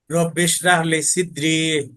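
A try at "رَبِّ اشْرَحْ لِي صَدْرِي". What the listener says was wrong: এই যে এই দেখেন আবার রাহ না র। সিদ্রি না, সদ জবর। সদেরি। সিদ্রি না সদ জবর সদেরি।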